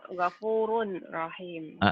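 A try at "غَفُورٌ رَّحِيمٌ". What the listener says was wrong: Asalnya gopurun ditulisnya, dibacanya jadi gopurur rahim. Hukumnya idgham. Matain ketemu ro.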